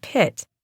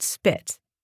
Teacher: This is referred to as aspiration. In word initial positions, P is pronounced with more expelled air.